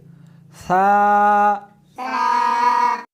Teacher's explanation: اس حرف کو زبان کے اوپر کے تالو سے ملا کر پڑھیں گے۔ تا اس حرف کو زبان کو دونوں دانتوں کے درمیان رکھ کر پڑھیں گے